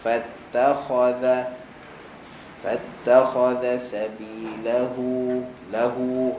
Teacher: Fatta nipis, senyumkan. Kha kha tebal, maka jangan senyumkan. Zal nipis. Fattakhadha sabilahu lahu.